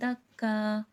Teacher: وقف میں ایک زبر اسکپ ہو جاتا ہے، ہٹ جاتا ہے، اور ایک زبر رہ جاتا ہے جو کہ الف مدہ بن جاتا ہے۔